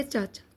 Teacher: चाचा में तालव्य ध्वनियों का प्रयोग हुआ है।